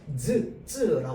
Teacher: 혀 끝이 앞에까지 나갔다 들어와야 돼요. 그런데 즈라고 하면요 이 혀가요 혓바닥만 입천장으로 왔다가 올라갔다 내려오면 돼요.